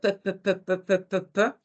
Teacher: Como un bilabial sordo, ¿sí? Un bilabial sordo. Y además, según el modo de articulación, como un oclusivo.